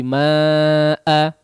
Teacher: kadarnya 4 atau 5 harakat ya karena dia adalah huruf mad yang bertemu dengan hamzah dalam satu kata. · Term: mad wajib muttasil